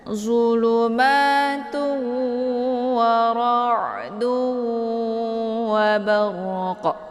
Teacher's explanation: Letak makharijul huruf ain ini yaitu di tenggorokan bagian tengah.